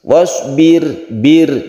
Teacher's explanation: sukun ra, sebelumnya ada kasrah, jadi dia itu tarqiq atau tipis. Wasbir, bir, jadi ciri-cirinya yaitu ketika membaca sukun ra ini bibir kita ke bawah, wasbir, itu tandanya tipis.